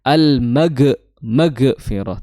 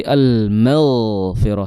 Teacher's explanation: Kemudian dia memiliki sifat mengalirnya suara. Jadi jangan almag maghfirah tapi almaghfirah dialirkan suaranya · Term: ghain